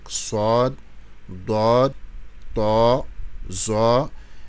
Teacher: ce sont des lettres emphatisées. On les prononce la bouche pleine. Donc Sod, Dod, To, Zo.